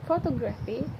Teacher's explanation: The stress retreats to the second syllable.